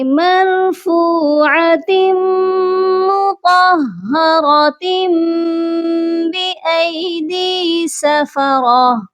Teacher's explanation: تو مطہرۃ یہاں پر اقلاب ہو رہا ہے کیونکہ تنوین کے بعد بأیدی اس کا با آ گیا ہے اسی لیے یہاں پر تنوین کی جگہ میم کو دے دی جائے گی